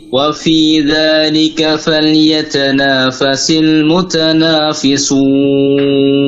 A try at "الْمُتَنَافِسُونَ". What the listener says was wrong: Dan mutanafisun. Tipis. Nah, jadi alifnya harus stabil. Nanya sudah tipis betul tadi, tapi saat alif antum panjangkan jadi nafisun. Harusnya mutanafisun, stabil.